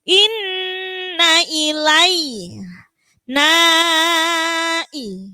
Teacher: Itu mad jaiz munfasil, hati-hati. Panjangnya 2,5 alif.